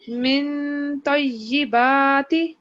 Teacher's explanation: پورا نون نہ پڑھیں, من نون کو ناک سے پڑھیں. اگر آپ اپنی زور لگائیں گی نا اوپر کی طرف تو پھر نون پورا ادا ہو جاتا ہے.